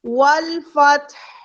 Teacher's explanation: والفتح میں نے تا کا ساکن بہت اچھے سے ادا کیا اور لاسٹ میں ہا ساکن کا ساؤنڈ بہت لائٹ سا دیا ہے